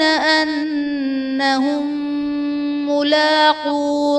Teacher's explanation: انہم ملاقو میں میم ساکن کے بعد دوسری میم ہے تو یہاں پر ادغام شفوی کا قاعدہ ہوگا، یعنی میم ساکن میں ہم غنہ کر کے پڑھیں گے۔